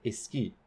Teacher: So instead of just saying ki and dropping the S, or putting ski in the same syllable, they add a new nucleus, A, to host that S in its coda, and we get a word like esqui. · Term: apenthesis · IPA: e s k i